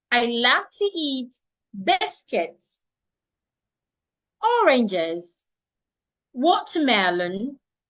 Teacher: When you're listing something, the moment you get to and the moment you want to state the last object or the last thing, your voice should come down. But while you're listing those things, your voice should go up.